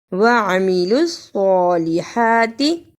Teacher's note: وَعَمِلُوا الصَّالِحَاتِ، اسے وَعَمِلُوا الصَّالِحَاتِ نہیں پڑھنا، عین کی جگہ پہ حمزہ کی آواز اور صاد کی جگہ پہ سین کی آواز نہیں آنی چاہیے